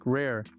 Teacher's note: the r is rolled slightly creating a soft purring sound